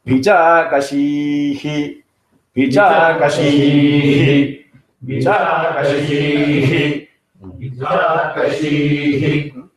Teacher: So here there is no swaram, it is flat. He, but only thing is that ha comes from the nabhi.